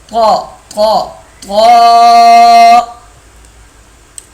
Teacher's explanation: زبان کی نوک جب اوپر کے اگلے 2 دانتوں کی جڑ کی طرف والے آدھے حصے سے لگے گی تو طا ادا ہوگا۔